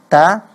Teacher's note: biasa saja ya Ta nah dia memang mempunyai sifat Hans hams itu ada semacam tendangan udara kecil ya dari dalam mulut itu bisa kita rasakan saat kita mengucapkan huruf ta